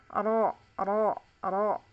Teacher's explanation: teorinya adalah di awal punggung ujung lidah